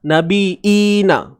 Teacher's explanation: Tak silap saya, itu bunyi dia. Dia tukar bunyi nabiyyi tu jadi hamzah. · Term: qiraat Imam Nafi'